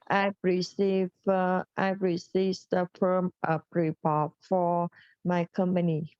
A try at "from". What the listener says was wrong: No, not form. This is from.